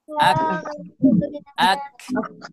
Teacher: Kalau di kaf itu sama di aqsal lisan, cuman mengarah ke langit-langit bagian yang keras.